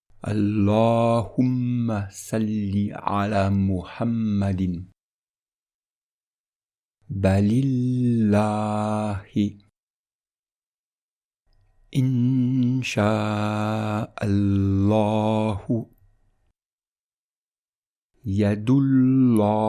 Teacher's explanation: il faut bien penser à mettre l'emphase sur le Lam Mushaddad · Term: Lam ul-Jalala